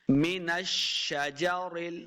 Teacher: لکم من الشجر، شین پہ سیٹی کی آواز آئے گی، نون کو شین کے ساتھ لانا ہے، شین مشدد ہے